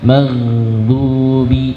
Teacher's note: Huruf ghain, maka ketika sukun jangan dipantulkan, bukan maghdu tapi dialirkan suaranya.